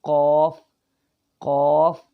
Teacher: قاف، قاف زبان کی جڑ تالو کے نرم حصے سے ٹچ کرے گی تو یہ قاف کا مخرج ہے، یہاں سے قاف نکلتا ہے۔